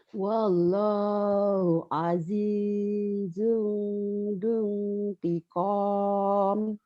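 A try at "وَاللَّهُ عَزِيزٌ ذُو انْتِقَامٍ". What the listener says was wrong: Wallahu azizun. Jangan dung ya. Tiqam.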